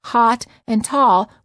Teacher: in many parts of the United States the AH in aw are pronounced the same